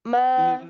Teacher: Ma ini kan pertamanya itu merapatkan kedua bibir. Itu pasti ada gunahnya, Bu. Ma. Kalau nggak ada gunahnya dia nggak bisa keluar.